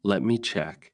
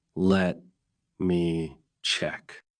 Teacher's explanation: But if you slow down and say it naturally, let me check. With a small pause and a rising tone, it sounds calm, helpful, and polite.